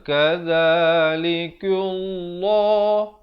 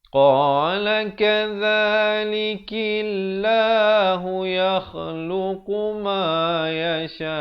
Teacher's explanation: Kaf, lafzul jalalah datang sebelumnya, kaf baris bawah dibaca nipis. Jangan pula kita baca kadzalikullah, itu tebal, salah.